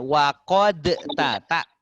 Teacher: Maka tak payah dalnya dikolkolahkan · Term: idgham